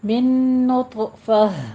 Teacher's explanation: نون کا نون میں ادغام ہو جائے گا، ٹھیک ہے؟ نون ساکن کا قاعدہ ادغام الغنہ، اور طا پر وقف آپ نے قلقلہ بھی کرنا ہے، اور طا کو آپ نے پر بھی پڑھنا ہے۔